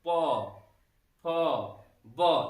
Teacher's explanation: अब जो प वर्ग के वर्ण है मित्रों, प वर्ग के वर्ण है, इनको ओष्ठ वर्ण भी कहते हैं। यानी कि इनका उच्चारण करते समय हमारा दोनों ओठ बंद हो रहा है